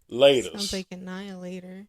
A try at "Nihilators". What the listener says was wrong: Nah, Annihilators. See, now you still throwing extra letters on there. Nihilators. Nihilators.